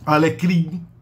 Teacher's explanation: Alecrim termina com in. In é uma vogal nasal. Uma vogal com um pouco de emissão pelo diário, pelo nariz, mas não tem o som do M no final, só na grafia, né?